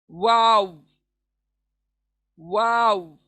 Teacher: तो वाव कहाँ से अदा होता है? होंठ गोल होते हैं बस, कोई टच नहीं होता, कोई चीज टच नहीं होती, बस जितना होंठों का घेरा होगा वाव वहां से अदा होगा, वाव, वाव।